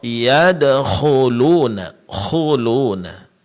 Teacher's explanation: k di sini ditebalkan karena dia huruf istilla